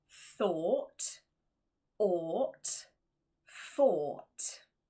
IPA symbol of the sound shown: ɔ: